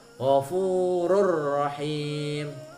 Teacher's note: Ini tanwin, ghafurun rahim, nggak boleh dibaca ghafurun rahim, tapi harus melebur tanwinnya kepada huruf kedua, huruf ra di sini. Jadi bacanya ghafurur rahim, nah, melebur, tapi juga tidak boleh dengan dengung. · enggak boleh Dibaca gofururohim tapi harus melebur tanwinnya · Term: idgham bila hunah